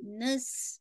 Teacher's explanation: نسلہ سین پہ بالکل شارپنیس ہونی چاہیے. نس بالکل وسلنگ ساؤنڈ واضح ہونی چاہیے